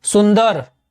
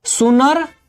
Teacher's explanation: भोजपुरी में नद के स्थान पर नन का प्रयोग होता है और नध के स्थान पर नह का प्रयोग होता है। जैसे हिंदी में कहते हैं सुंदर, सुंदर को भोजपुरी में कहेंगे सुनर।